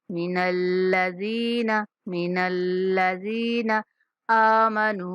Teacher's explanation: حمزہ کے اوپر کھڑا زبر ہے، حمزہ کو کھینچنا ہے، اور نون کے بعد واو مدہ ہے تو نون کو کھینچنا ہے۔